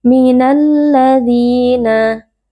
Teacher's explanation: Di sini alladzina ada alif lam asyamsiyah karena ada huruf lam bertemu dengan huruf lam. Huruf lam dileburkan ke dalam huruf lam kedua sehingga huruf lam menjadi huruf bertasydid.